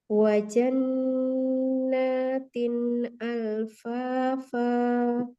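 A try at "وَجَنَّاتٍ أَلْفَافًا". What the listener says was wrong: PR di huruf jim ya. Jimnya masih terdengar bocor ya. Hamsi.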